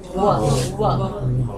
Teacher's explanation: व बोलकर देखिए, व, इसमें दांत और ओष्ठ दोनों है। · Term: वकारस्य दंतोष्ठम